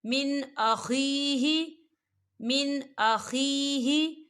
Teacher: فَمَنْ عُفِيَ لَهُ مِنْ أَخِيهِ، من أخيه، دیکھیں من، یہاں نون ساکن ہے، نون ساکن کے بعد حمزہ آ رہا ہے اور حمزہ جو ہے حروف حلقی کا ورڈ ہے تو یہاں پر بھی اظہار ہوگا اور ہم اسے بغیر غننے کے پڑھیں گے۔